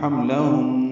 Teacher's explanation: این یضعن ضاد پر ہے، عین ساکن پہ اظہار ہے، نون پر زبر جلدی ادا کریں گے. حملہن میم ساکن پہ اظہار، لام باریک، ہن میں نون مشدد پہ غنہ ہے